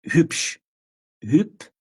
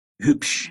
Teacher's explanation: o B fica com som de P